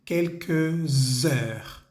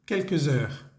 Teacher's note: Tenemos que hacer la conexión entre la S que termina de la palabra quelques y la E que comienza con la palabra heure. Entonces va a sonar algo así como quelques heures. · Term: liaison